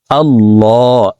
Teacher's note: আল্লাহ, এই লামকে ল বলে অর্থাৎ মোটা করে পড়তে হবে, কারণ আল্লাহ শব্দের আগের হরফে জবর অথবা পেশ হইলে এই লামকে ল অর্থাৎ মোটা করিয়া পড়িতে হয়।